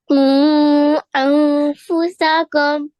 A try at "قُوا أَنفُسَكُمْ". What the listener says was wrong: Okay, try and do this a little bit longer. Try it once more.